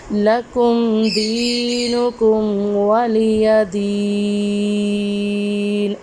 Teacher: دال کو 1 الف کی مقدار میں لمبا کریں گے۔ ادھر بھی یا ساکن سے پہلے زیر ہے تو ادھر بھی ہم وقف کے بنا دال کو ایک الف کی مقدار میں لمبا کریں گے۔ · ادھر بھی یا ساکن سے پہلے زیر ہے تو ادھر بھی ہم وقف کے بنا دال کو ایک الف کی مقدار میں لمبا کریں گے۔ وقف کی صورت میں نون پہ عارضی سکون لگ جائے گا تو ادھر عارضی سکون کی وجہ سے وقف پہ ادھر مد عارض کا قاعدہ ہوگا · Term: یا مدہ